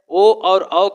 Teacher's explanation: ओ और औ का उच्चारण स्थान होगा कंठ और ओष्ठ और दोनों को मिलाकर बनाया गया है कंठ ओष्ठ। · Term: कंठोष्ठ